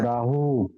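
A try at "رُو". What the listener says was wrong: রা না, র উ, র র র উ।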